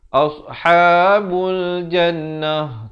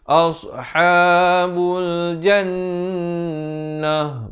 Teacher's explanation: jan itu didengungkan 2 harakat wajibul gunnah.